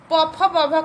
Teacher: ओष्ठ के सहारे से प फ ब भ का उच्चारण होता है। हमारे दोनों ओष्ठ जो है ना वो सट जाते हैं जब हम प फ ब भ का उच्चारण करते हैं, एक दूसरे को स्पर्श करते हैं।